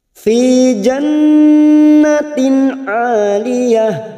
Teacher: Fi kasar bertemu ya sukun 2 harokat matobi'i. Jannatin nun yang bertasdid gunnah musaddadah. Dikatakan selama 3 harokat.